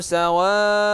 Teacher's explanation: Wanya jadi panjang. Kenapa panjang wa? Karena di depannya ada alif mad. Ya, alif mad ini karena dia itu bertemu lagi dengan huruf hamzah, ya, karena dalam satu kalimat maka menjadi mad wajib.